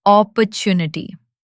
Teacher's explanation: It's opportunity with the stress on the third part.